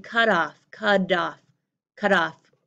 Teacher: this T at the end of a word is not a strong t. It's a held back, unreleased d.